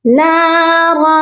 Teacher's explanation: نارن کی جو تنوین ہے اس پر بھی چھپا ہوا غنہ ہوگا. یہاں پر ہم اپنی آواز کو ناک میں چھپائیں گے